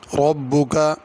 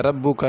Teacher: ربک اس میں بھی را کو پر کرنا ہے، ربو کا نہیں پڑھنا